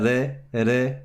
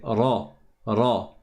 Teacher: Le ra, attention, il est emphatique. C'est pas re, re, c'est ra, ra.